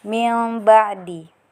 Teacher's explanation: nun sukun bertemu dengan ba, kemudian diganti mim sukun dengan didengungkan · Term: iqlab